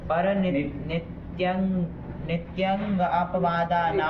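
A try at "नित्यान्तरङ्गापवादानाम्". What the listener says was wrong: नित्यंग कहाँ बोले हम? नित्यांतरंग, अंतरंग का है ना, इसलिए अलग अलग भी बोल रहे तब भी अंड बंड कर रहा है। अलग अलग भी बोले सब शब्दों को। पर नित्य, अंतरंग और अपवाद, ये 4 ठो है। चारों का द्वंद्व करके षष्ठी का बहुवचन बनाना है।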